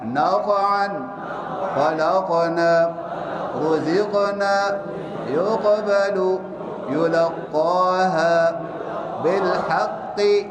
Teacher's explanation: ज़बान की जड़ को ऊपर उठाकर मोटी आवाज़ में पढ़ें